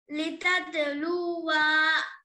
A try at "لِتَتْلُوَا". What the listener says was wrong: لام کو کھینچنا ہے, لام کو کھینچنا ہے, کیا پوچھا میں؟ پھر کھینچ رہے کو ماں. تتلوا.